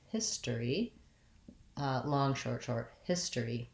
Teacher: This has first syllable stress, and the stress is on the hiss part. So it just sounds like the word hiss with an S sound, history.